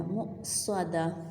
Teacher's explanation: دیکھیں جب ہم نے اس کے ڈاٹس کو ختم کر دیا تو یہ ہاں بن گئی، تو آیت جب مکمل ہوئی ہم رکے، اگر اینڈ پر گول تا ہے تو ہم نے اس کو ہاں میں بدل دیا